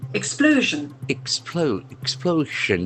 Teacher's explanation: And accent falls on the second syllable.